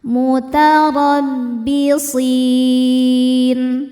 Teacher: Huruf ro dibaca secara tafkhim karena barisnya di atas yaitu baris fathah. Bacanya roho dibaca dengan tebal.